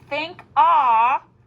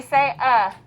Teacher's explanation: we need to think ah to make sure we spell it correctly but we say uh